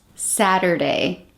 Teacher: here in the US we usually change the T to a soft D when it's between two vowels